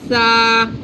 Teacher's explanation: there's no whistling sound it's a soft letter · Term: tha